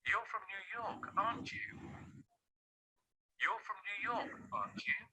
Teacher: by the end of this question tag, he makes it rising to convey a message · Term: rising intonation